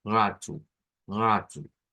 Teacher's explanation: una o se reemplaza siempre por el sonido de una u la o es reemplazada por una u